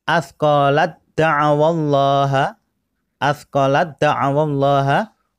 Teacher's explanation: huruf ta diabaikan masuk ke huruf dal